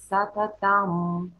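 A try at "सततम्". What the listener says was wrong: Сататам. Immediately, like no gap. Сататам, там, no. Сататам, сататам.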